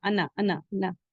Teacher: یہ لفظ انا کے بعد کا الف نہیں پڑھا جاتا، کہیں نہیں پڑھا جائے گا